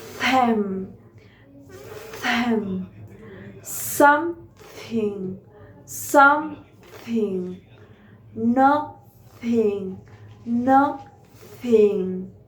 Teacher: The phonic articulation, it is applied to the consonant sound that is articulated with the tip of the tongue between the edges of the incisors. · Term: interdental